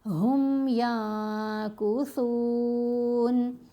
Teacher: اب ہم نے میم پر غنہ نہیں کرنا، جلدی پڑھنا ہے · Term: اظہار